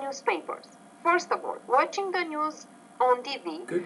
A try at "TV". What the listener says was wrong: Okay, TV, pronounce the T with a little bit more air. Be careful about that sound, because if you don't, it can almost sound like a D consonant sound, and you don't want it to sound like a different sound.